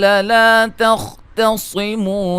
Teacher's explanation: قاف کو موٹا، الف مدہ، لام لا الف مدہ. خا کو موٹا، صاد کو موٹا، واو مدہ.